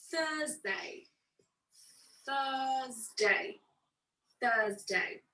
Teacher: notice that i don't pronounce the r